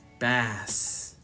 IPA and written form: bæs (bass)